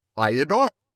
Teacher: we slip a little Y sound in there and it becomes I adore